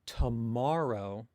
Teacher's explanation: So if I say tomorrow in English, it's kind of slight exaggeration, but you get the idea. Tomorrow, the ma bit is longer, louder, and said at just a slightly higher pitch than the other syllables, but the pitch is kind of a more result of trying to say it louder and with more force than the other syllables. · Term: stress accent